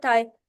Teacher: थाई थाई में देखिए कि आपकी जुबान की टिप आपके ऊपर वाले फ्रंट टीथ से जाकर टच कर रही है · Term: डेंटल साउंड